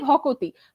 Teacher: দুটো ব্যঞ্জন ধ্বনির মধ্যে একটা স্বরধ্বনি এসে যুক্ত হচ্ছে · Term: স্বরভক্তি